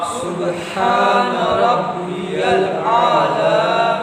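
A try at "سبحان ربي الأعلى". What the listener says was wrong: اعلیٰ نہیں پڑھنا، عین کو واضح کرنا ہے، سبحان ربی الاعلی۔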